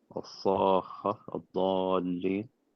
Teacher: kha with a shadda and lam with a shadda is the equivalent of 2 kha or 2 lam. So what we do in this case, the first kha is actually a kha with a sukoon.